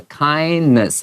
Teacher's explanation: 这个 N-E-S-S 的这个 E 都是不发这个音，它是元音 schwa 的这个声音